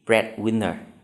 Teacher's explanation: Đáp án A là một danh từ ghép. Như vậy, chúng ta sẽ nhấn dấu nhấn ở âm tiết đầu tiên.